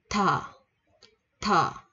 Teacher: chữ thờ ở đây á nó cũng sẽ bật hơi ra nha mọi người. Chữ thờ ở đây á, nó sẽ có, mình là có tiếng Việt mình là chữ tờ với chữ hờ là thành chữ thờ.